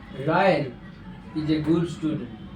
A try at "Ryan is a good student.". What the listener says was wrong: So good and student was the same sound. You have to say Ryan is a good student. Ryan is a good student.